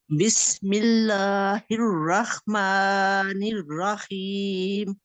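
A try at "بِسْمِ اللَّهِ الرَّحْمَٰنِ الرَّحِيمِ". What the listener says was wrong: हाँ, ये जरा आपने हा को ठीक पढ़ना है, हा में कोई भी हाँ नहीं होना चाहिए, ठीक है, एक दफा दोबारा पढ़िएगा जरा।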